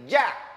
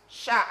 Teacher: Kalau ja ditempel agak kuat di langit-langit Ja Kalau Sya itu ada ruang keluar angin Sya agak turun sedikit sya sya yaak turun sedikit tidak menempel